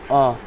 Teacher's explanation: अ को बोलने में हमको कोई एक्स्ट्रा समय नहीं लगेगा केवल अ। कंठ से डायरेक्ट निकलेगा अ। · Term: ह्रस्व